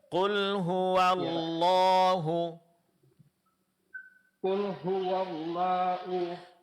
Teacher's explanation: Qul hua. Nah, baru digabung dengan lafaz Allah dan lamnya ditebalkan.